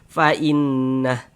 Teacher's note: kalau misalkan kita berhenti tepat di mad silah maka tidak berlaku tanda panjangnya